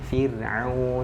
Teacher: Ini huruf ra sukunnya, belakangnya harokatnya kasroh atau fathah atau dhammah. Nah, jadi kalau huruf ra-nya huruf ra sukun sebelumnya itu kasroh, berarti dia dibaca tipis